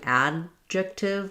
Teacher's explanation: I want to keep my a kind of short to represent that unreleased D. So the a is stressed, the D is unreleased.